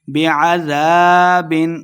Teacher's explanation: بعذاب بغیر غنہ کے پڑھیں گے، اظہار کا قاعدہ ہے